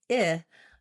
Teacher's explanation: When I say /ɪ/, I want to have a little bit lower and it has that lax sound